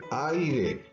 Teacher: La A es una vocal abierta, la I es una vocal cerrada, no se pueden separar. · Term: diptongo